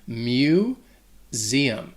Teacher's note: that first syllable that mu has like an m sound combined with like saying the word you mu zeum that s is also going to sound like a · that s is also going to sound like a z